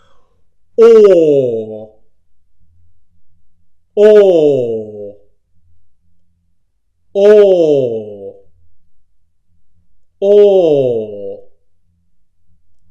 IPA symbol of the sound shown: ɔː